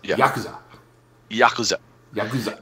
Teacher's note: The emphasis is on the first syllable, usually.